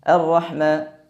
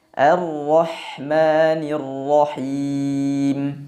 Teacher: Seperti yang kami jelaskan barusan bahwa pada pengucapan huruf ha, nafas, angin, udara, suaranya mengalir dengan deras